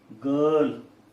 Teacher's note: As we see from the phonetic transcription, R is not pronounced.